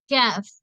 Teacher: நாவின் பிற்பகுதியும் மேல்முரசும் இணையும் போது உண்டாகிறது